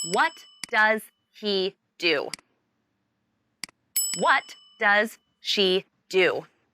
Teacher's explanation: what and do are the key words in this question so they should be emphasized and your voice should go down at the end